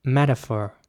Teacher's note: Whereas in American English, it would be more like metaphor. So the T is very soft. It's almost like a D